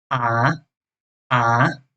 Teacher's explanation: And the rising tone or the fourth tone is a, a.